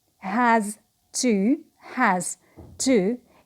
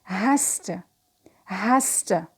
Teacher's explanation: So, because of the t, the z becomes s.